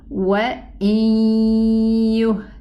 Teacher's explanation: the merging of the noon is not complete because it left behind its ghunna sound · The trace of the noon is the ghunna. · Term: not complete merging